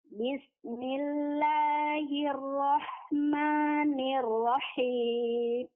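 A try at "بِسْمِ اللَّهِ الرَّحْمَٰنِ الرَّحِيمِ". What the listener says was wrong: Rahim. Pertama matnya panjangkan 4 harokat dan mim di akhir tuh jelaskan sukunnya Bu ya.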